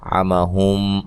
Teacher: عمہم عین کو واضح نکالنا ہے، میم ساکن کا یہاں ادغام مع الغنہ ہے، اور غنے کی مقدار بھی 1 الف کے برابر ہوتی ہے۔